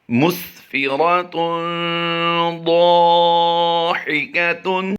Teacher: اس پورے لفظ میں ہم نے ضاد الف زبر ضا کو لمبا کیا ہے، باقی کسی کو لمبا نہیں کر رہے، صرف غنہ کرنا ہے اور پر حروف کو پر پڑھنا ہے